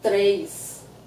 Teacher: So the number três, we don't write it with an I, but we say it with the I.